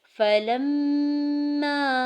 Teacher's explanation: فلما، دیکھیے اس حرف میں فلما، لام کو جب میم مشدد کے ساتھ ملاتے ہیں تو آواز ناک میں 2 سے 3 سیکنڈ تک روکتے ہیں اور اسے غنہ کہتے ہیں۔ فلما، اور میم کو اس لیے لمبا کر رہے ہیں کیونکہ ساتھ الف ہے اور یہاں پہ الف مدہ ہو رہا ہے، اس لیے الف مدہ بھی ادا کریں گے۔